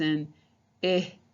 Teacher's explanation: when you say that short eye your tongue is in the middle you're showing off your teeth a little bit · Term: short i sound